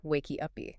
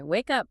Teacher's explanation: Because almost all syllables in Portuguese end in a vowel. Brazilian learners instinctively add an e sound to the end of English words that end in hard consonants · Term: epithetic vowel